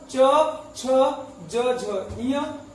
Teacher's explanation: च वर्ग का उच्चारण तालु से होता है